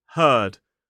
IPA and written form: hɜːd (heard)